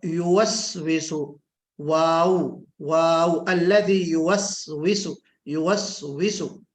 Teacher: واو کا جو مخرج ہے وہ ضم الشفتین، یعنی منہ کو گول کرنا ہے، منہ کو گول.